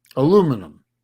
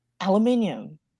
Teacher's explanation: you guys drop a whole fucking syllable